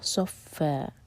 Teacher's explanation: آگے ہے صفن، اور فتح کی تنوین پر جب ہم رکتے ہیں تو یہ ہوتا ہے مد عوض عن التنوین، تو یہ بن جاتا ہے فا دو حرکہ لمبا